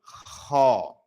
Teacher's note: Pangkal lidahnya sedikit terangkat. Maka suaranya jangan kha. Nah, jangan kha tidak kha tetapi ko dia menebal. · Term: istilla